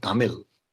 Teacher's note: it's a retroflex sound where the tip of the tongue curls back · Whereas the last sound in the word Tamil, it's definitely not la. It's a retroflex sound